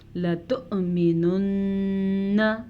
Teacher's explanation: نون کا غنہ ادا کر لیں اور حمزہ کو جھٹکے سے ادا کرنا ہے